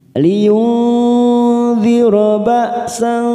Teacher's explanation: nun sukun bertemu dha, namanya bacaan ikhfa ausad. Kita samarkan 3 ketuk.